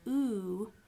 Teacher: if you have a back vowel like ooh you have a low f2